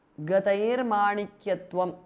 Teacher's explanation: Gataihi, visarga changes to repha or r.